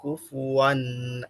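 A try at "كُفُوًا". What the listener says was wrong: কুফু ওয়ান, এখানে কিন্তু ধরে রাখার কোনো অপশন নাই, কুফু ওয়ান ছেড়ে দেন, কুফু ওয়ান আপনার ধরে রাখাতে মনে হচ্ছে আপনি এখানে গুণনা করে পড়ছেন বা টেনে পড়ছেন, এই টেনে পড়ার অপশন নাই, গুণনা করার অপশন নাই।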